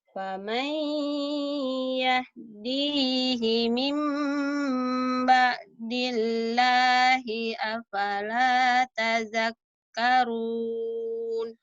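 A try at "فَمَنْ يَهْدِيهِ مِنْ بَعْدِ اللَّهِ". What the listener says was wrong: Udah bagus tapi ainnya nggak keluar kamu. Faman yahdihi mim ulang. Kamu dilahnya kayak gitu ya. Ya, beleber gitu. Mimba dilah. Harusnya mimba dilah biasa aja. Biasa aja jangan ngebelewer ya. Mimba dilah. Biasa, mimba dilah.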